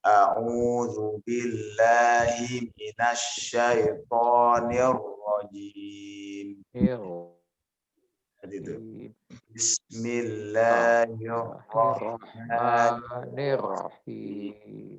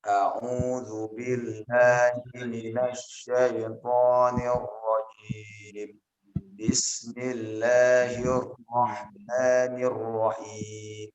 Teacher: Kita menggunakan nada yang datar lebih dahulu. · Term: nada datar